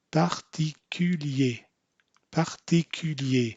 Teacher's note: So what we want to do is first forget about the R after the PA and just say pa, and now it's par, ti, parti, parti, Q. Now when you make the CU sound, don't make a Y in there